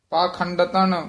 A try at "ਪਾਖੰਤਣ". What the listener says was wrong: ਖੰਡਤਨ ਨਹੀਂ ਹ ਪਾਖੰਡ ਪਾਖੰਤਨ ਪਾਖੰਤਣ